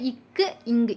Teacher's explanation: நாக்கினுடைய முதற்பகுதி அன்னத்தினுடைய அடிப்பகுதியை பொருந்துது அடுத்து நாக்கினுடைய இடைப்பகுதி அன்னத்தின் நடுப்பகுதியை பொருந்துது அடுத்து நாக்களுடைய நொனிப்பகுதி அன்னத்தின் நுனிப்பகுதியை